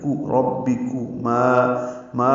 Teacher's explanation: الف مدہ ہے، 2 حرکات لمبا ہے